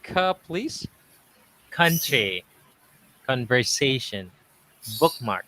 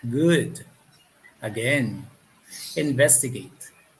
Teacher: the cuss sound is unvoiced and the g sound is the voice